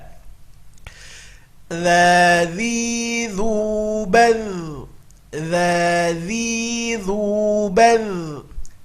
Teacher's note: Huruf dha harus keluar ujung lidahnya, kalau tidak dia akan berubah menjadi za.